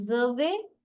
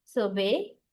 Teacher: The noun set, always we stress the first syllable. And verb set, we always stress the second syllable. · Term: stress placement